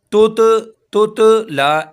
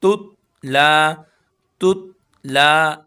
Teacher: लाम को एक अलिफ के बराबर खींचेंगे।